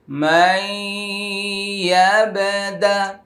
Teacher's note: এখানে মিম সাকিনের পরে মিম আসছে, ইদগামি শাফাউই গুন্না।